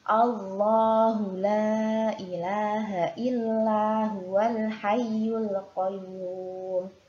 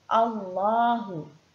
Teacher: Jadi di sini lafadz jalalahnya harus dibaca tafkhim atau tebal.